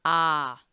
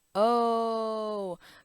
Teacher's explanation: That's the short O sound, but we want the long one. So the short O sound is ah. But the long one is oh, just like close, close, or no, or go. It's not ga, it's go, and that's the long O sound.